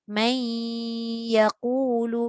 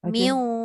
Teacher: Maknanya dengung dekat nun ada. Dan dia akan masukkan separuh dekat ya. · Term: idgham naqis